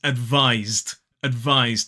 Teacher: Now, so sometimes that letter S can be pronounced as s, which is unvoiced. However, in this word, the S is pronounced z, z, which is voiced